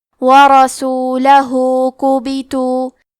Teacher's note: کلمت ورسولہ میں حرف الراء پہ زبر ہے تو یہاں را کا حکم ہے تفخیم، لہذا ہم حرف الراء کو موٹی آواز میں پڑھیں گے. آخری میں ہاں پہ الٹا پیش ہے، یہاں حکم ہے مد صلہ صغرا تو ہم اپنی آواز 2 مد کے برابر لمبی کریں گے.